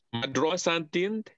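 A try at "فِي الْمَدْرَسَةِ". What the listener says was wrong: Ada alif lam. Fil madrasati.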